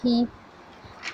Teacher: ہا حلق کے نیچے والے حصے سے ادا ہوتا ہے، ہا زیر زیر کی آواز نیچے کو جاتی ہے، زیر کو جلدی پڑھیں اور بالکل بھی نہ کھینچیں، ہا زیر ہی۔